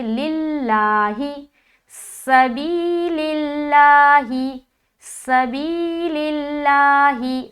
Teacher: ہم لفظ اللہ کا لام کو باریک پڑھیں گے